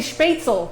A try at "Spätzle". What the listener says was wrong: It's L-E, not E-L.